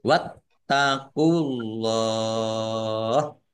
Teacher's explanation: Ditekan biar tampak doublenya. Allahnya dibaca tebal karena harokat di depannya dhammah.